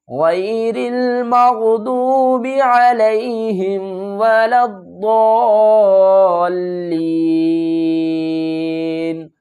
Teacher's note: وقف کی صورت میں نون کو ساکن پڑھیں گے